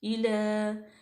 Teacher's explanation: लाम बारीक भी है और लाम पे फतह इशबाई है, इसको लंबा करेंगे